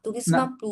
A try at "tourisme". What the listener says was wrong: তুরিজমা বলি নাই আমি বলছি তুরিজম এমটাকে হালকা টাচ করে ছেড়ে দিতে হবে হ্যাঁ তুরিজম তুরিজম এরকম হ্যাঁ সামান্য টান দিয়ে হবে